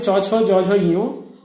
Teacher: এই বর্ণগুলি জিহ্বার মাঝ অংশ তালুর কঠিন অংশ স্পর্শ করে উচ্চারিত হয় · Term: তালব্য বর্ণ